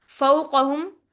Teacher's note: वाव साकिन जिससे पहले जबर हो, वाव लीन बनता है, कॉफ मोटी पड़ी जाएगी, और हा अक्सर हलक से अदा होगा